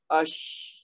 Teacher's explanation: شین کی آواز جب وہاں تک آپ پہنچیں گے تو تھوڑا سا اس کو جاری رکھیں گے, فوراً نہیں روک دیں گے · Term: ہمس